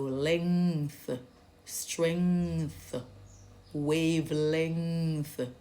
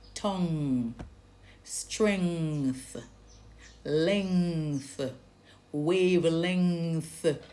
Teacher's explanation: So now it's a nasal sound. And that back of the tongue now is raised. It's lifted and it touches the back of the roof of the mouth going towards the throat. That is the soft pallet.